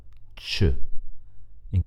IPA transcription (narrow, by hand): t͡ʃ